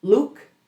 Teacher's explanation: The long oo in Luke is more tense and more melodic. It's like you're repeating that oo sound.